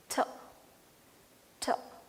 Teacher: you will be using the tip of your tongue and you will not be touching your front teeth or any other organs. You will be just leaving out or releasing the air out.